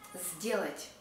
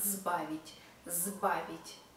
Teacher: First unvoiced consonant S is followed by voiced consonant D, and maybe that's why we also pronounce it voiced. З. Not сделать, but сделать.